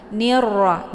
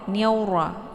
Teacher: ra ini sifatnya takrir, dia ada sedikit getaran di ujung. Nirra, jangan niaura ya.